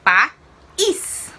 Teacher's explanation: ela é uma oxítona, porque a sílaba mais forte é a última, é o is